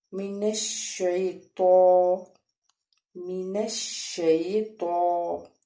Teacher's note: تو کے اوپر کھڑا زبر ہے اس لیے ایک الف کے برابر ہم کھینچ کے پڑھیں گے